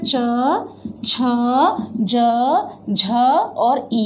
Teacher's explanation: चूंकि ये जिह्वा तालु को छूती है, प्लेट्स को छूती है, इसलिए पैलेटल कहते हैं